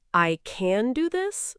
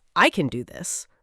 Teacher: When you say, I can do this with a rising tone, it sounds like you're asking for permission or you're unsure. But when you say I can do this with a falling tone at the end, it's a statement.